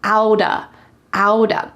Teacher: In American English, this is extremely common that when there's a T with a vowel on either side, the T changes to a D